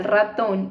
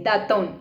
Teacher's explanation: Por ejemplo, cuando yo le digo al estudiante que diga ratón y él dice datón, ahí sustituyó la R por la D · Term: sustitución